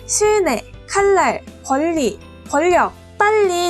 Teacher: 유음에 영향으로 니은이 리을로 바뀐 겁니다 따라서 유음이 아닌 니은이 유민 리을로 교체됐기 때문에 얘네는 유음화라고 부릅니다